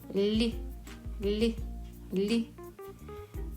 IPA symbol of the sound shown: л'